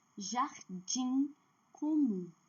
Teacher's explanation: E quando terminar com I ou U, como eu falei, a última sílaba é forte, mas não é por causa do M, por causa do I e do U.